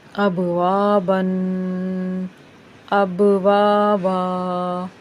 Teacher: وقف کرنے کی صورت میں اس کو الف سے بدل کر لمبا کر کے پڑھتے ہیں، پھر چاہے الف ہو یا نہ ہو۔